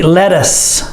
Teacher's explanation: the TT sounds like a d